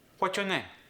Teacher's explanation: In the word your, we lost the R. And in the word name, the A went to that E sound.